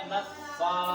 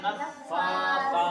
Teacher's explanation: فا کے اوپر دیکھو کھڑا زبر ہے تو فا کو ایک الف کے برابر کھینچیں گے